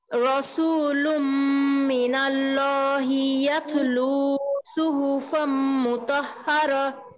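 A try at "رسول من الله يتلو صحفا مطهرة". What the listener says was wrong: ফামে গুন্না কম হয়েছে আর হাতে চাপ কম হয়েছে সুহুফাম মুতাহহারা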